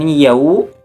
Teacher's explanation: huruf wawu sukun didahului oleh huruf iya yang berharakat fathah. Dibaca panjang 2 harakat. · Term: madlin